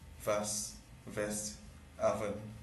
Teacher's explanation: The substitution of labiodental fricative v for bilabial glide